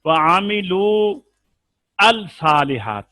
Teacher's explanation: لام تعریف جو ہے اس کے بعد حرف شمسی ہے تو لام بھی نہیں پڑھا جائے گا